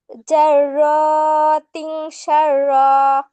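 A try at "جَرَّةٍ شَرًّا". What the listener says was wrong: তিন গুণনা করো। শুধু তো ইকফা করতে বলি না, এখানে গুণনাও করতে হবে, হ্যাঁ। জাররাতিন, আমি কিভাবে করছি দেখো। জাররাতিন শাররা, জাররাতিন শাররা। নাকের ভিতরে লুকায়ে গুণনা করতে হবে, হ্যাঁ।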